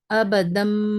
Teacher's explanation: 2 زبر کو ہٹا کر میم ساکن سے بدل کر پڑھ رہے ہیں. بیما. اور بتا رہے ہیں کہ منہ کی کیفیت کچھ اس طرح رہے گی، آواز ناک میں سنائی دے گی. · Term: اقلاب